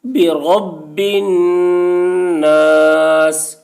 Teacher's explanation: نون مشدد ہے، نون میں غنہ کریں گے